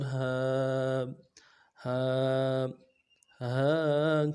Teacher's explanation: اگلا لفظ جو لفظ ہا ہے، ہا کھڑا زبر ہا، لفظ ہا کو نرمی سے پڑھنا ہے اور کھینچ کے پڑھنا ایک الف مقدار میں، کھڑا زبر کو کھینچ کے ایک الف مقدار میں کھینچ پڑھنا ہے